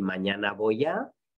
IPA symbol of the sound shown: β̞